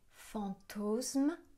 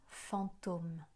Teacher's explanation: The syllable has undergone what is called an amuensis, meaning that in the course of time one stopped pronouncing a sound. The /s/ sound at the end of the syllable has disappeared.